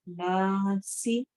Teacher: नून के ऊपर शद आ रही है, इससे नून गुन्ना हो रहा है, तो हमने नाक में आवाज लेके जानी है।